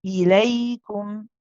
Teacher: Then join with the ya. The ya we said is a rakhawa letter, so you keep it going for a bit.